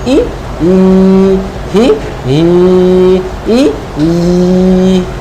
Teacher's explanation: ইয়া খারাজের ই। জিহ্বার এবং তালুর মধ্যখান থেকে চাপ দিয়ে ই